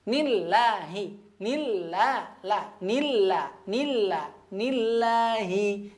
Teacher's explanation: Nah, perhatikan di sini ada lafaz Allah, tapi sebelumnya huruf berharokat kasroh. Nah, oleh karenanya lafaz Allah dibaca tipis.